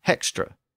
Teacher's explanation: many of these same speakers began to arbitrarily add H's to words where the H didn't belong.